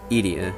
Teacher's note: I'm pretty sure, again, it's accent on the first vowel in it